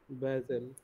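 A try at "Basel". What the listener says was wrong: বাজেল, আ হবে, বাজেল।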